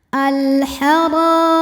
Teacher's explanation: Huruf ra dibunyikan secara tafkhim karena harokatnya di atas fathah. Cara bacanya ditebalkan. Al-hara. Ra matobi'i zahiri karena ada alif didahului fathah maka ra-nya panjang 2 harokat.